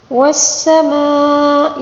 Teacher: مد متصل ہے، اس کو 5 الف کے برابر کھینچ کر پڑھیں گے